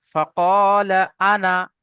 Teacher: এখানে এই যে টানটা দিলে হবে না, ফাকাল আনা, এই আনা টান হবে না